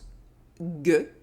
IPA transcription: g